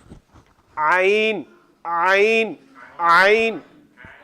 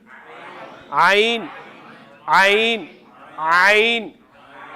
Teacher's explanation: اور عین ہا کس حلق سے ادا ہو رہے ہیں؟ درمیان والے حلق سے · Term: وسط حلق